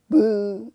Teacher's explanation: 앞에서 말씀드린 것처럼 아주 부드러운 소리입니다. 그래서 영어에 B, P피와 비슷하지만 힘을 더 쭉 빼고 해야 돼요. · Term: 비읍